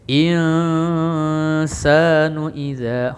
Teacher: nun mati bertemu sin ikhfa, bacanya samar-samar atau dengung